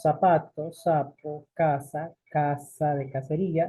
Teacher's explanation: Hablando de ceseo, si no lo entendemos, pues recordemos que no hacemos la diferenciación entre Z y S